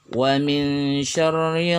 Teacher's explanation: Wa min syarri, nun sukun bertemu dengan shin, ikhfa hakiki. Dibaca samar dan didengungkan selama 2 harokat.